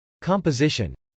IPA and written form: k.ɑmpəzˈɪʃən (composition)